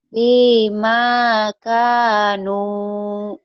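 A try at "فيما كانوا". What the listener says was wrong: Fima kanu. Jangan. Fima. Jangan dientek-entek. Fim. Datar aja datar. Fima kanu. Datar aja, ya.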